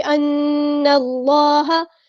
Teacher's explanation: نون پر غنہ زمانی ہو رہا ہے، الف کے برابر رکیں گے · نون کو ہم نے لام کے ساتھ ملا دینا ہے، حمزۃ الوصل ہمارا ڈراپ ہو جائے گا ، اللہ کا لام ہم نے پور یعنی ہیوی ادا کرنا